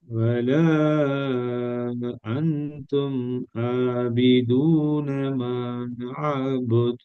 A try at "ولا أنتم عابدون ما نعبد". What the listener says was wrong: ஒன்று இந்த இடத்துல மதுரை அடையாளம் இருக்குது. ரெண்டாவது இந்த எழுத்தை உச்சரிக்கிறது ரெக்கார்டை கேட்டு பாருங்க. இந்த எழுத்தை உச்சரிச்சதுக்கும் இந்த எழுத்தை உச்சரிச்சதுக்கும் உள்ள வேறுபாடு ஒன்றும் இல்லையே. அந்தும் ஆபிதூன என்று தானே வருது. இந்த இடத்துல ஃபோர்ஸ் பண்ணுவோம். இதை நாங்க தொண்டையால் எடுத்து ஓதி கொண்டு போயிட்டுருவோம். ஆபிதூன அந்தும் ஆபிதூன அந்தும் பாருங்க. வல அந்தும் ஃபோர்ஸ் பண்றோம். அன்தும் ஆபிதூன இந்த இடத்துல அப்படியே ஃபோர்ஸே இல்லை.